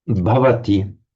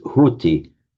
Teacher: the aspirated consonant the b has softened to a h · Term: lenited